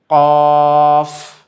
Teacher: জিহ্বার গোড়া তার বরাবর উপরের তালুর সঙ্গে লাগিয়ে উচ্চারিত হয়